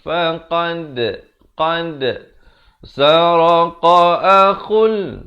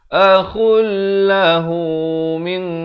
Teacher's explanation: Di sini idgham bila gunnah, masuk tanpa dengung. Daripada akhun jadi akhul.